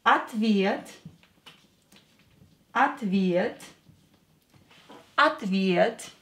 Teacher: О will be pronounced as а, because it's not stressed. Here е is stressed.